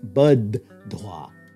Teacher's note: the tua is going to assimilate to the voiced aspirate da · the first da will reduce to an unaspirated version · So first it becomes buddhwa, and since Sanskrit can't tolerate two aspirates stuck together, the first dha will reduce to an unaspirated version